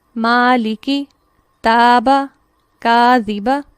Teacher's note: چونکہ یہاں پر میم، تا اور کاف باریک حروف ہیں، لہٰذا الف بھی باریک پڑھا جائے گا، اور اس الف کو کہیں گے الف مرقق۔